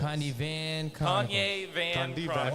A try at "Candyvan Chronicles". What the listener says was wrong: Why are you throwing an R in there?